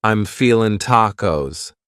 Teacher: You might say, I'm feeling, cutting off that G.